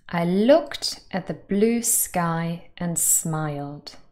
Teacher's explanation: so the verbs that are stressed are looked blue sky and smiled they all carry content so they're stressed